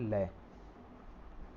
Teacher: लय का उच्चारण करने के लिए हमारी जीभ है जो मसूड़ों को छूती है, यानी मसूड़ों को छूती है, उसके और उसके आसपास से हमारी हवा मतलब मुख से हवा निकलती है। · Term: पार्श्विक